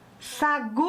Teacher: A sílaba tônica é o gu.